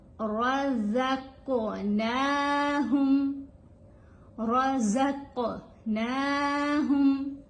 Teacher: یہاں پہ قاف جو ہے یہ ساکن فارم میں آ رہی ہے، یعنی اس کے اوپر جزم ہے، یہ ساکن ہے. تو جب قاف ساکن ہو تو اس کے اوپر کلکلا کیا جاتا ہے، آواز تھوڑی ہلا کے پڑی جاتی ہے